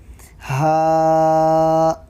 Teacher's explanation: حلق کے نیچے کے حصے سے ہا ادا ہوتا ہے